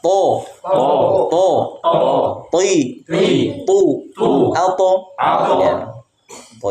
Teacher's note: nanti dibahas di pembahasan sifat sifat namanya istilla atau idbaak ya jadi pangkal lidahnya naik ke langit-langit sehingga suaranya tebal